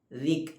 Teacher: ഫീമ അൻത മിൻ ദിക്. ദാലിൻ്റെ മഖ്റജ് നാവിൻ്റെ അറ്റവും മേലെ മുൻപല്ലിൻ്റെ അറ്റവും